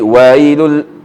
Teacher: wailun ni sama juga madlin, you kena baca panjang wailul.